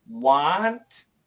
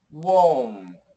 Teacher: But the O, we start big, but it gets smaller. It goes O. So let's go slow.